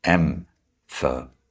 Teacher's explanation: No, you have to emphasize the most important words, like da, da, da, da, da, da, da. And the stress is on the first syllable in the word emphasize